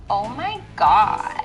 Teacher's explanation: Two, use creaky voice. This means to lower your pitch